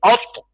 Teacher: फा में शिद्दत है आवाज बंद होगी